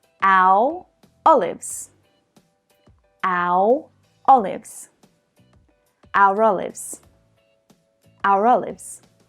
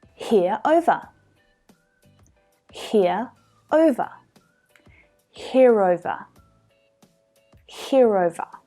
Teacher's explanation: I'm linking two vowel sounds together. Your eyes. And we do that with the linking R.